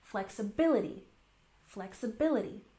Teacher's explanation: We've got a subtle stress here on the first syllable and the main stress here on the third syllable.